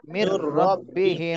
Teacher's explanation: নুন সাকিনের পরে ঈদগামে বেলা গুন্নার হরফ আসছে, এই জন্য গুন্না ছাড়াই মিলাতে হবে।